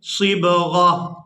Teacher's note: اس ایک آنکھ والی تا کو ہا میں بدل دیں گے اور غین کو اس ہا ساکن کے ساتھ ملائیں گے